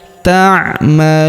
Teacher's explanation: Huruf lu kita panjangkan 2 harokat karena wawu sukun di depannya